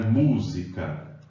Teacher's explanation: sílaba tônica é a antepenúltima isso quer dizer terceira de trás para frente ok quando isso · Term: palavras proparoxítonas